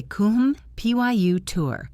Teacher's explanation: We say kum, pyu, tur. The stress is in the middle. The ends are weak. · It looks like computer, but the O is a schwa. The E is a schwa. We say kum, pyu, tur.